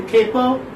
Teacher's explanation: First pa is aspirated and second pa is not.